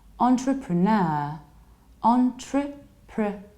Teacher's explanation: It's not entre, but entre. Entrepre, you reduce pr, and then you have a long ner. · And you stress the last syllable